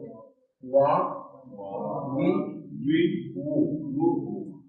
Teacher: اور یہ وا جس میں دانت ٹچ ہو گئے وا اب دانت ٹچ نہیں ہوئے. دانت صاف نہ لگے تو دونوں ہونٹوں کی گولائی سے یہ نکلے گا واو